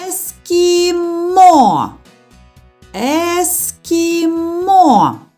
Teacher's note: більше чутно звук о над третім голосним ставимо наголос